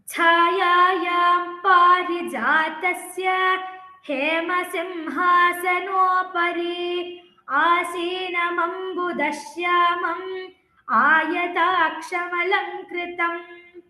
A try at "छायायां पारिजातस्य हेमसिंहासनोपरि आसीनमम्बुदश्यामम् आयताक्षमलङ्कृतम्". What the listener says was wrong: हेमसिंहासनोपरि तत्र there it is hraswa not dirgha once again